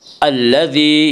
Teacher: الذی، یا مدہ، یا مدہ وہ یا جو ساکن ہو، اس سے پہلے زیر ہو، یا مدہ کو ایک الف کے برابر کھینچ کر پڑھیں گے